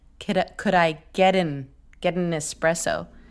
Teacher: we do this thing where we glottalize the N. We delete the an sound and we just go TN.